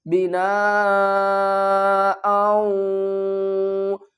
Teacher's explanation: حمزہ کو واو سے ملائیں گے، ادغام کا قاعدہ ہے